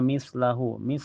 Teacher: Jadi ujung lidah nempel ke ujung gigi seri atas ya. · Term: sa